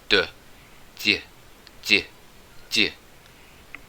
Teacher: This letter represents the palatalized dobro, and it would sound like d, d, d. It's like a small y sound at the end of a d